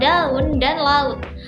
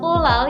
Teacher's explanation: vokal A dan U di sini diucapkan terpisah, sangat berbeda dengan diftong au pada kata pulau yang menyatu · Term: deret vokal atau hiatus